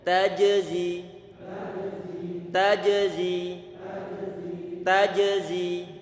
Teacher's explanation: kita berikan sifat syiddah pada huruf jimnya dengan cara tidak kita alirkan suara, kemudian kita berikan qalqalah pada huruf jimnya.